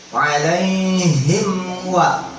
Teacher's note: Wa itu makhrajnya deket sama huruf mim, adanya di ujung bibir. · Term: izhar syafawi